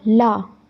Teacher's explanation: okay, पार्श्विक जो वर्ण होते हैं, पार्श्विक वो होते हैं जिसमें जो मुख द्वार होता है वो मध्य से बंद होता है और हवा जो है वो हमारे दाईं और बाईं ओर से निकलती है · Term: पार्श्विक वर्ण